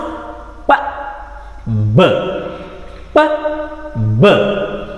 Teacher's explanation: ಸೊ ಅದ್ರದ್ದು place of articulation and manner of articulation ಕೂಡ ನಿಮಗೆ ಇನ್ನೊಂದು ಸರಿ ಹೇಳೋದಾದರೆ, ಎರಡು ತುಟಿಗಳು ಏನಾಗುತ್ತೆ, ಕ್ಲೋಸ್ ಆಗುತ್ತೆ. ನಮ್ಮ ಏರ್ ಸ್ಟ್ರೀಮ್ ಬ್ಲಾಕ್ ಆಗುತ್ತೆ. ಬ್ಲಾಕ್ ಆಗಿ ಸಡನ್ ಆಗಿ ರಿಲೀಸ್ ಆಗ್ತಕ್ಕಂಥದ್ದು.